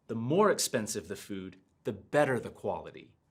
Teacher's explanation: notice how i stress the word and then my intonation falls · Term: adding stress